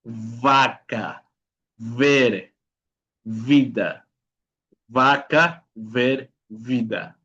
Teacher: el sonido de la B pequeña que le llamamos en español, ¿no? Que es un sonido labiodental.